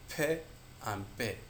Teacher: The place of articulation bilabial, two lips come together.